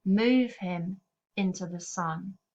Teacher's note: Owen is often using trochees rather than iambs, such as move him into the sun.